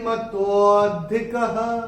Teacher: ये जो विसर्ग आ रहा है चरण की समाप्ति पे आ रहा है, तो इसका उच्चारण केवल ह ही होगा